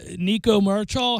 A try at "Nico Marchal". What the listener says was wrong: It's just the L is silent. It's just Marchio.